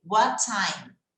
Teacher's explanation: Você vai falar como se tivesse um som de T só.